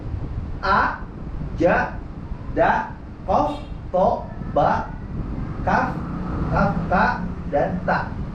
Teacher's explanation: Di antaranya ada 8 huruf yang memiliki sifat syiddah, yang suaranya ketahan, dia nggak mengalir